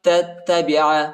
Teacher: تا کو دوسرے تا کے ساتھ ملائیں گے، ٹھیک ہے، اور دوسرے تا کو شدت کے ساتھ سختی کے ساتھ پڑھیں گے، دوسرے تا پر شد آیا ہے، ٹھیک ہے۔